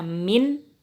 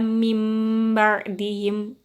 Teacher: Nun sukunnya dibaca mim, sukun mim, bukan min ya. Jadi suara nun sukun ditukar dengan suara mim gitu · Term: iklab